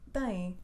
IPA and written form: tɐ̃j̃ (Tem)